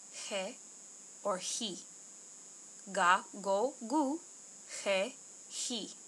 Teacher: it can be pronounced with the soft version of the G, which is a lot like an H